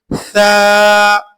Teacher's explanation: जुबान की अगला हिस्सा ऊपर वाले दांतों से लगाकर बाहर थोड़ा सा निकाल कर पढ़ेंगे सा, लेकिन बात जहन में रखिए 3 नुक्ते वाला यह हरफ है।